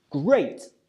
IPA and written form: greɪt (great)